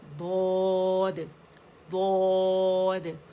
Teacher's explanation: ضاد کی آواز تو سائڈوں سے آئے گی، میں دو کی، لیکن دال کی آواز مخرج جہاں پہ ہماری جو گم لائن ہے، پیچھے اوپر کے 2 دانت ہے، اوپر ثناء علیہ اس کے پیچھے جو گمز ہے، وہاں سے ہم جب دال کے لیے مخرج پہ جائیں گے تو دال کی آواز ادا ہوگی، ٹھیک ہے۔